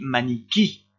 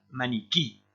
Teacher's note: Si votre écran est un peu petit, vous avez un accent écrit ici parce que ce i là est prononcé plus fort. On dit maniquí et on insiste sur le dernier i.